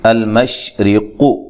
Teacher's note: اچھا جی، المشرق، را کو باریک پڑھنا ہے، قاف کو موٹا ادا کرنا ہے۔